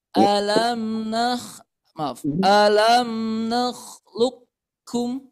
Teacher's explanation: Nah, secara baca ya, maka cara bacanya ini diidghamkan. Maksudnya huruf qafnya dilebur, langsung dimasukkan ke huruf kafnya. Nah, ini namanya idgham mutaqarribain kamil ya.